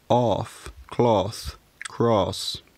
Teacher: the vowel began to lengthen before f, s, and th as well.